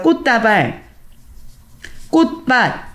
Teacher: 음절의 끝소리 때문에 치읓이 다 디귿으로 바뀌어서 교체돼서 발음이 되죠